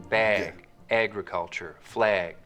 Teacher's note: raising and tensing in the trap vowel when it comes right before a g sound